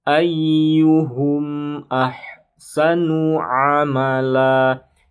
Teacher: syafawi sama seperti izhar biasa dibacanya jelas ya tidak ada guna tidak ada dengung tidak ada panjang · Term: izhar syafawi